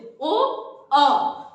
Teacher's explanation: ओ का जो आपका ओष्ठ का भी प्रयोग हो रहा है और कंठ से, ओ, अ, आपका जो प्रयोग हो रहा है ये कंठ और ओष्ठ से प्रयोग हो रहा है।